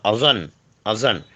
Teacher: حرف لسویہ یعنی زبان کا سرا اور اوپر کے دانتوں کے اندرونی کنارے ، اوپر کے دانتوں کے اندرونی کنارے اور زبان کا سرا،